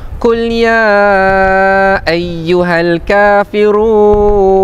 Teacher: Dalam riwayat Hafz daripada Imam Asim menurut Tariq As-Syatibiyah dibaca dengan kadar empat harakat. Sebab tu kita baca panjang. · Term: mad jaiz munfasil hukmi